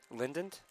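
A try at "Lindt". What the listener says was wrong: Oh, lint. Oh, lint. Yeah, I thought it was lint. That's lint chocolate. It's not Linden. There's no two syllables in there. It's just one word, lint.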